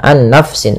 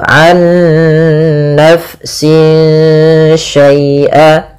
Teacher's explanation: Nah, ada bacaan idgham bi gunnah, yang dimana dia di sini kita harus membacanya nunnya masukkan ke nun kedua dan disertai dengan gunnah.